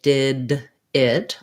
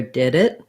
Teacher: we naturally can flap those d's that come in the middle more easily than we sometimes do with ts it's a difference